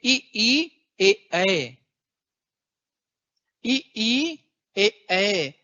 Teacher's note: थोड़ा भी महसूस यदि कर पाओगे तो जीभ की नोक थोड़ी सी एक्टिव होती है ई ई ए बोलने में। जिह्वा कंपन होता है, वाइब्रेशन होता है, एक्टिव होती है। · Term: अग्र स्वर